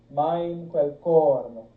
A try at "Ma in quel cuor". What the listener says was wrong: Cuor. Cuor. Cu. Cuor. Make sure you're saying cuor no. No, it's cuor non. Two words. Cuor non. And that's what I'm telling you, to put a little shadow vowel at the end of cuor, because ma in quel cuor non son capace.